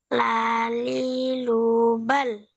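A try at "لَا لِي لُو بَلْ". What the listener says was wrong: Oke, bagus.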